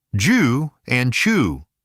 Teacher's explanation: sounds that close briefly and release right into friction. These are called affricates. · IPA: /dʒ/ and /tʃ/, /dʒ/